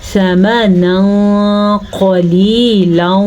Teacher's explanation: اخفا کا قاعدہ ہو رہا ہے، نون تنوین کے بعد قاف حروف اخفا میں سے آیا ہے تو ہم تنوین کی آواز کو چھپانے کے ساتھ ساتھ غنّے کے ساتھ پڑھیں گے